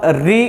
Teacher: अगर यहाँ से उच्चारण इसके ऊपरी भाग से होता है तो ये मूर्धा का स्थान होता है। तो जब हम री का उच्चारण करते हैं तो हमारी जिह्वा मुड़ के पीछे की तरफ जाती है और मूर्धा का स्पर्श करती है, तो री का उच्चारण कर पाते हैं।